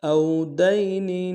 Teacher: او واو لین ہے، بغیر کھینچے پڑیں گے